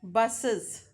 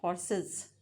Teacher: So this sound buses schwa, this e is inserted to separate the two sibilants z and s, because both are sibilant, both are hissing sound, so that s and z cannot be spoken together. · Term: Vowel insertion